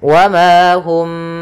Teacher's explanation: Hum bimu'minin, ada mim mati bertemu ba, maka kita namakan dengan ikhfa syafawi, yaitu mimnya ditahan dulu, suara mimnya ditahan gunnahnya · Yaitu karena huruf mim ini berkenaan dengan makhraj daripada huruf syafah, ya, makhraj yang kita keluarkan dari syafah kita, dari bibir kita, sehingga ketika melafalkan mimnya agak dirapatkan, wa ma hum, tapi tidak serapat mim ketemu mim